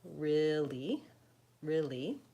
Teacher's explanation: The first syllable just becomes 1. So I tend to say really, really, with the stress on the first syllable.